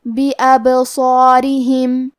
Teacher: یہاں حرف الصاد ہے اور صاد حروف تفخیم میں سے ہے، لہذا ہمیں صاد کو بھاری آواز میں پڑھنا ہے. اور کیونکہ اس کے بعد مد الف ہے، مد الف اپنے پیچھے والے حرف کا حکم لیتا ہے تفخیم میں اور ترقیق میں، لہذا ہم مد الف کو بھی بھاری آواز میں پڑھیں گے. · را کے نیچے زیر ہے لہذا یہاں را کا حکم ہے ترقیق، ہمیں حرف الرا کو پتلی آواز میں پڑھنا ہے